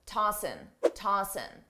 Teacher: commonly a native speaker will drop the G sound on tossing and just say n tossing tossing I personally don't do this but many native speakers